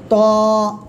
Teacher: জিহ্বার আগা, সামনের উপরে 2 দাঁতের আগার সঙ্গে না, গোড়ার সঙ্গে লাগাবেন, লাগে মোটা আওয়াজে উচ্চারণ হবে।